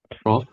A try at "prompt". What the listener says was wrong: You have to try and pronounce both the P and T at the end of the word.